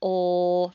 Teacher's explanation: there's no air coming out of the nose